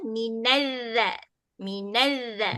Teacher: cuma bunyi z dia jangan bunyi macam z bahasa melayu sebab ini huruf zal huruf jalil lidah bunyi dia lembut aje.